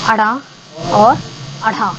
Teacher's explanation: ठीक है, तो इसमें क्या होती है कि हमारी जीभ जो है वो ऊपर उठती है, मूर्धा को टच करती है, वो एकदम झटके से नीचे आती है। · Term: उच्छिष्ट व्यंजन